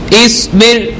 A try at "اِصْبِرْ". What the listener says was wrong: صاد موٹا. اصبر.